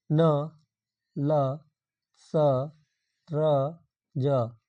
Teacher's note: वत्स ध्वनियां वे ध्वनियां होती हैं जिनका उच्चारण करते समय जीभ का अलग भाग मसूड़ों को स्पर्श करता है। जैसे हिंदी में न, ल, स, र, ज प्रमुख जो है वत्स व्यंजन है।